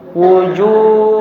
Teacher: Wujuh didengungkan dengan dengung yang dipanjangkan ya.